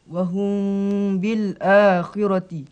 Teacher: Amalannya hendaklah mim diikhfakan di sisi ba serta didengungkan dengan khada 2 harakat. Mim diikhfakan di sisi ba serta didengungkan 2 harakat. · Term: ikhfa syafawi